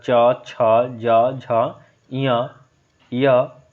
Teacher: च ध्वनि का उच्चारण स्थान तालु होता है।